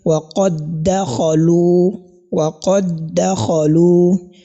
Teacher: This dal has been assimilated into the second dal.